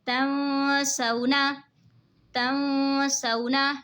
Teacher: तंसौना, तंसौना, नून साकिन के बाद हुरूफ़े इक़फ़ा का सीन आ रहा है तो इक़फ़ा होगा यानी गुन्ना करके पढ़ेंगे। और वाव साकिन से पहले ज़बर है तो वाव लीन होगा, इसीलिए इसको खींचना नहीं है